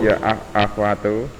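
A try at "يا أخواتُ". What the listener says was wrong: Ulangi, ya akhwatu. Kha-nya yang jelas. Ya akhwatu.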